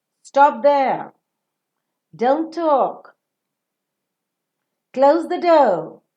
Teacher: when you're falling down it would mean that it is a command